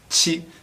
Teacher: There's a lot of muscles tense for the English. Chi, it's a lot more relaxed sound